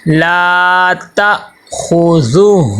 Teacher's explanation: تا کے ساتھ آگے حمزہ ہے تو حمزہ کو تھوڑا سا جھٹکا دینا ہے. عین کی آواز عین کی آواز پیدا نہ ہو.